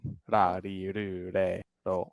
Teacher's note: the Japanese version of ra, ri, ru, ro, re is like right in between the R and the L